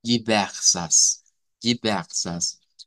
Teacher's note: la pronunciación coloquial nos dice que en vez de una R uvular, se hace una H aspirada.